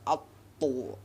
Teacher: huruf to ini mati kita harus pantulkan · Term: kolkola